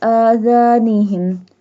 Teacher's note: Zal pronounced softly. It pronounced from the tip of the tongue touching the inner edges of the top 2 front teeth · Stretch the alif because it has a standing fatha sign, and zal. Zal pronounced softly.